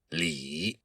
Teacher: This all goes back to an old Chinese word that Confucius used, li, kind of like L-I, and you have to say that I sound with a very low tone. It's the third tone in Mandarin Chinese.